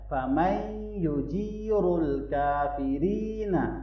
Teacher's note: یہ والی را جو ہے اس کو باریک پڑھیں گے کیونکہ اس کے نیچے زیر ہے، اور آگے یا مدہ ہے۔